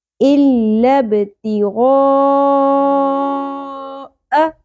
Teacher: غا مد اصلی کے ساتھ مد متصل فالو ہوگی کیونکہ ایک ہی لفظ کے اندر سبب مدہ حمزہ آ گیا ہے مد اصلی کے بعد، تو ہم اس کو 5 الف کے برابر کھینچیں گے